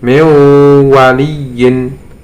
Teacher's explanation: jadi membacanya bukan min wali, tapi dimasukkan ke huruf wawnya dengan disertai dengung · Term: idgham bihunnah